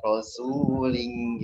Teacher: su-nya ada domanya, jadi dua panjang. Rasulin gitu.